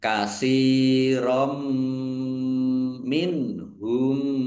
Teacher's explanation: Bacaan idgham bighunah masuk dengan mendengung langsung masuk ke huruf mim. Fathah tanwinnya tidak dibaca. Ya, ditandai mimnya ada tasdidnya dan mendengung.